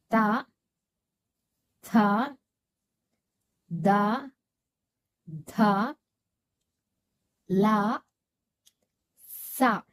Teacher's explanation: ಹಲ್ಲಿನ ಸಹಾಯದಿಂದ ಈ ಅಕ್ಷರಗಳನ್ನು ನಾವು ಉಚ್ಚಾರ ಮಾಡುತ್ತೇವೆ. ಇವುಗಳು ದಂತ್ಯಕ್ಷರಗಳು.